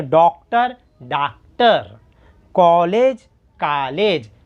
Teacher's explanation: हिंदी में आ की आवाज़ आएगी, सिर्फ काना आ की आवाज़ आएंगी।